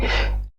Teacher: huruf Ha keluar dari tenggorokan bagian bawah tenggorokan bagian bawah disebut dengan aqsal halqi nah sama seperti Hamzah